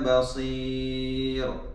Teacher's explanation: ra nipis sebab sebelumnya kasrah